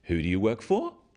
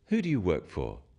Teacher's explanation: when you ask people questions about themselves in English use a falling tone it sounds friendlier instead of who do you work for who do you work